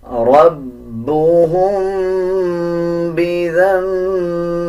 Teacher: میم کے اوپر جزم آ رہا ہو اس کے بعد با آ جائے تب بھی غنہ کیا جاتا ہے